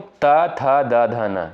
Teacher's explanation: त, थ, द, ध, न ये सभी आपके जो है दंत से उच्चारित होने वाले वर्ड हैं। लेकिन ट जो है ये आपका मूर्धा से उच्चारित होने वाला वर्ड है। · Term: दंत्य